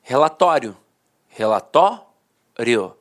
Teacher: A penúltima sílaba era a sílaba mais forte e a última, de fato, perdia a força. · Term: paroxítona terminada em ditongo